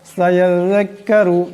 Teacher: জাল আওয়াজটাকে পাতলা নরম করিয়া পড়তে হবে। আবার এই জাল এই কাফকে ধরবে, এরপর রা আছে, রার আওয়াজটাকে মোটা করিয়া পড়তে হবে।